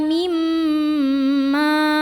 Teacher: Ma mad tabi'i karena ada alif yang didahului baris fathah. Cara bacanya dipanjangkan, mimnya 2 harokat.